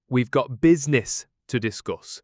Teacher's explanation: But in Birmingham, it sounds more like we've got business to discuss. Notice how business has that short I sound instead of the long I. And discuss might sound more like discuss with equal stress on both syllables.